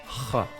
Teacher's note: the realization of the somewhat rare h-ch sequence as the voiceless uvular trill